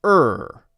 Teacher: American English is er where the tongue is curled quite far back in the mouth